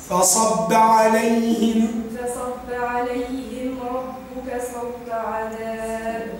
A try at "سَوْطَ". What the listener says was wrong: أبالسين أم بالصاد؟ إذا سوط.